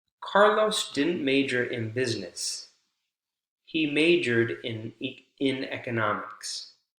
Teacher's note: ED pronounced like a D, right? D consonant sound because r is voiced.